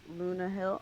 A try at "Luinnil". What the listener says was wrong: Luinnil. Just no H.